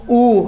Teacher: जैसे मैं बोलूं ऊ, तो मेरे होठों का जो आकार है वो कैसा हो रहा है? वो गोल हो रहा है। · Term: वृत्ताकार स्वर